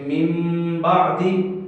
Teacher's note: نون ساکن، نون تنوین کے بعد اسی طرح اگر کوئی با آ جائے، اگر با حرف آ جائے تو با کے اندر میم کی آمیزش کرتے ہوئے پڑھیں گے، یعنی گویا کہ جب نون کا میم میں اقلاب کریں گے تو اس وقت میم کی آواز اس میں آئے گی